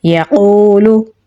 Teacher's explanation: काफ को पुर यानी मोटा पढ़ेंगे और वाव के साथ मिलाएंगे क्योंकि वाव के ऊपर जज़म है, वाव हरूफ मद्दा में से है तो इसे एक अलिफ के बराबर लंबा पढ़ेंगे तो पढ़ा जाएगा यक़ूलु।